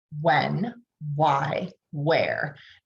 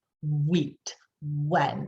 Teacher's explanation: this breathy wh is unvoiced and it's in words like when why